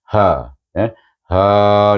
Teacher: ha pangkal halkum, jangan baca karha, itu ha pedas tengah halkum, ni pangkal halkum, bunyinya mendada sedikit, iaitu dia antara dada dengan halkum. Jadi bunyinya ha, ha 2 harakat. · ha itu kita tukarkan daripada baris 2 kepada baris 1 kerana dia diwakafkan dengan hukum mad iwad 2 harakat, iaitu hukumnya ialah mad iwad ditukarkan baris 2 kepada baris 1, dibaca macam mad asli jugalah, sama 2 harakat.